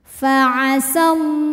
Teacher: sukun bertemu sukun tidak bisa dibaca sehingga sukun pertama dilepaskan faasallah lam jalalah dibunyikan secara tafkhim karena huruf sebelumnya berharakat fathah maka lam dibaca tebal